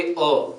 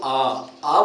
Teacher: दीर्घ स्वरों का उच्चारण करते समय ह्रस्व स्वरों से दुगुना समय लगता है। कहने का तात्पर्य है कि दीर्घ स्वर जब उच्चारण करेंगे तब हमें दो मात्राओं की आवश्यकता होती है।